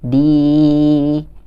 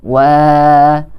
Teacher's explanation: Nah, kalau di sini huruf yang berharokat kasrohnya adalah huruf da. Huruf da yang memiliki harokat kasroh yang dibacanya di bertemu dengan huruf ya sukun, maka kita harus membacanya dengan panjang, sepanjang 2 harokat. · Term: mat tabi'i